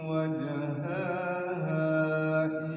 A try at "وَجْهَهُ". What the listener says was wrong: Ulang, wajhahu bukan wajhaha.